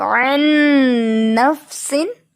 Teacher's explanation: نون ساکن کے بعد نون آ گیا ہے. ٹھیک ہے. تو نون پہ ڈیفینیٹ غنہ ہوتا ہے